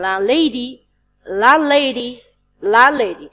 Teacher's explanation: hear the d sound in land, but not in landlady